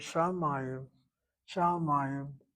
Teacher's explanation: accent on that second of three syllables. First syllable is CV, medial kamatz, one place removed or accented is its position.